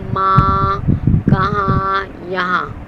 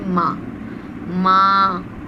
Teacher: جب میرے اوپر نقطہ نہیں ہوتا تو میری آواز ناک سے نکل جاتی ہے، جیسے ماں. صحیح ہے، ناک سے آواز نکل رہی ہے. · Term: نون غنہ